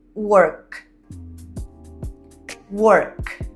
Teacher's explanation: Perceba que quando você faz o som do K, work, não há movimentação, não há vibração alguma das suas cordas vocais. Work. Então isso é caracterizado como um som surdo.